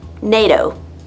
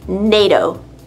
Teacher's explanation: It sounds like NATO. NATO with a D sound.